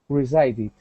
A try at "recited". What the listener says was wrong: this will be with an S sound and not a z sound